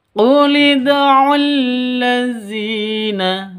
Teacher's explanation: Qulidulladzina dzi panjang dua ketukan. Karena ada ya mati diawali dengan kas kasrah panjang dua ketukan.